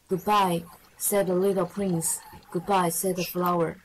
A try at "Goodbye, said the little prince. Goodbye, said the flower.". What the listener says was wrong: Very good. Well done. Nicely read.